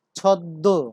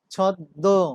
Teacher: দ্বিত্ব উচ্চারণের শেষ ধ্বনিটি নাসিক্য প্রভাবিত হয়। তার মানে সেখানে অনুনাসিকতার সৃষ্টি হবে।